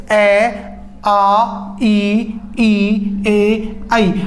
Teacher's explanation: उच्चारण के समय होठों का आकार है वो गोल नहीं होता है, अन्य ही किसी आकार में होठ होते हैं। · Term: अवृत्तमुखी